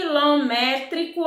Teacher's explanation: uma proparoxítona porque a antepenúltima sílaba é a tônica